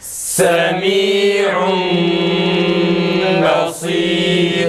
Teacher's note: Sat tam kalın çıksın